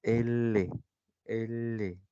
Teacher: El aire sale por los costados. ¿Sí? Está pasando por tus cachetes y por ahí está saliendo. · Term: laterales